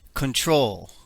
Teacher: In control, the stress is on the last syllable. The last syllable is spelled with one consonant letter preceded by one vowel letter.